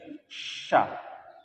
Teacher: ketika pengucapan huruf sya itu gigi atas dan gigi bawah itu mengapit lidah. · kalau kalimat shin itu sya munculnya dari tengah lidah ya.